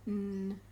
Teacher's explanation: n is a nasal, which means there's air coming out of your nose